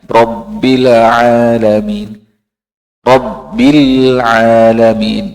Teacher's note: Nah, huruf lam bukan huruf qalqalah, ya. Jadi Rabbil tidak ada pantulannya.